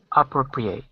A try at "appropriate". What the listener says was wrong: You're saying appropriate. We want to say appropriate. Again, you're starting high at the beginning is what you're doing, and then you're kind of going down.